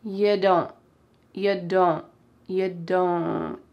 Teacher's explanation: Negative contractions in American English often have that final T sound cut off. · there's an N sound coming out of my nose